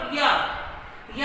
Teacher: जीभ है वो मुख में मतलब घूमती तो है लेकिन कहीं वह स्पर्श नहीं करती, तो उन्हें हम कहते हैं अंतस्थ व्यंजन।